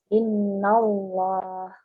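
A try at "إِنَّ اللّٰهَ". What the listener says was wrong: Masih muncul huruf wawunya. Kurang bersih ya. Tebal tapi bersih, tidak sampai muncul waw. Innallah.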